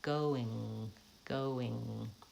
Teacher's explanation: my tongue is already up in that ng position and I just have to return to it after the vowel